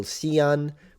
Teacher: Xi'an, which is written Xian, but it's the X in Chinese is a sound in between the S in English and the sh in English. It's in between.